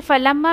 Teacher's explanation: फलम्मा मीम मुशद्दा है, light light पढ़ा जाएगा